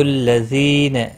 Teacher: یا مدہ ہے، ایک الف کے برابر کھینچ کر پڑھنا ہے